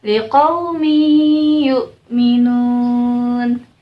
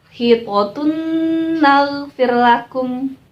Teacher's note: jadi suaranya itu ada suara dengung sepanjang satu setengah Alif atau dua harokat kalau suara dengung itu keluarnya dari hidung